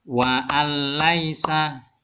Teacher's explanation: nun sukun bertemu dengan huruf lam yang juga disebut idgham bilagunah cara membacanya dimasukkan ke dalam ee suara lam dan tidak boleh dengan mendengung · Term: idgham bila gunnah